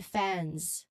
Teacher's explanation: So this is particularly notable because, as the slide indicates, it is often a plural marker, or it indicates the third person singular verb ending, meaning here the N sound, it is followed by the voiced Z sound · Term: NZ cluster